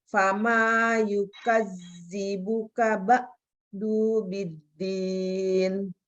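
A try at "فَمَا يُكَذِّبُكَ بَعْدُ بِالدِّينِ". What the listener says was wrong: Dubiddin, du-nya juga pendek.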